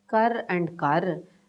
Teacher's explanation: this falling tone in kar is phonemic